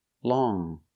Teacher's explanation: with long we use the NG sound in our nose long we don't say long it's long but if we change